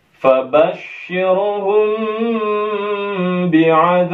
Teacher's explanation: Kemudian kita akan wakafkan di ba sehingga posisi mad asli ini berubah menjadi mad arim lis sukun. Kita akan baca panjang boleh sampai 6 harakat.